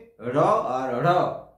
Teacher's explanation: যে ধ্বনিগুলো উচ্চারণ করার সময় জীব মূর্ধাকে তাড়িত করে, তাড়িয়ে নিয়ে গিয়ে উচ্চারণ করবে। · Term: তাড়নজাত ধ্বনি